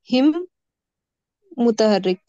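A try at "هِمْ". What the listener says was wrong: नहीं, हिम बगैर कलकला कल पढ़े थे ना, कलकला और बगैर कलकला। तो जो है बगैर कलकला बोलेंगे उसको।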